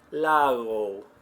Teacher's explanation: the G between 2 vowels is very soft in Spanish